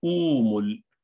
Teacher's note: इसको पेश की मुनासिबत से जो उसके पहले वाले हमजा पर है वाव से बदल देंगे